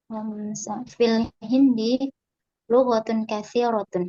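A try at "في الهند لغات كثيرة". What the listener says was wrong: Lughatun dipanjangkan baiknya.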